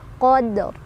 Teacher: yang ro-nya itu dibaca berisyarah lebih lirih atau lebih pelan dari huruf sebelumnya. Qadr, karena ro-nya tebal, qadr. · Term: waqaf isyarah